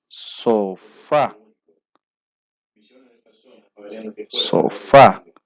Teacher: el acento o fuerza de voz está en la última sílaba entonces decimos estamos frente a una palabra aguda